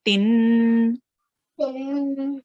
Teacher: And what do we do with second kasra? Ta. We add a nasal sound.